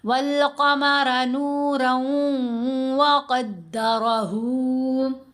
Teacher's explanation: यहाँ अलिफ और लाम आए तो लाम की आवाज़ पढ़ी गई, अलिफ खामोश हुआ। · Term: हरूफे कमरी